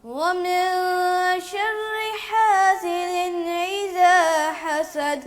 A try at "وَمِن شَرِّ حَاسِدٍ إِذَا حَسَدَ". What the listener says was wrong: آپ نے حمزہ کی آواز کو عین کی طرح پڑھ دیا، اذا نہیں بیٹا، اذا، اذا.